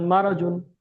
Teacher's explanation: জবরটি হলো হারাকাত, হারাকাতের পর তাড়াতাড়ি জতের উপরে দুই পেশ আছে একে তানবির বলে। তানবিনের পুরো নাকে তুলে পড়তে হয়।